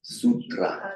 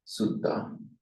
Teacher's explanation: Regular phonetic mutation, the tr of the Sanskrit becomes a double T in Pali, sutta. And notice that the U is shortened.